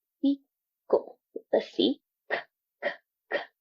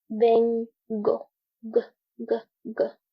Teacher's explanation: notice how your vocal cords aren't vibrating. So therefore, the sound of of the k sound will be an unvoiced sound.